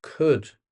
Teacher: this word has a silent L in it. Could. We don't say the L.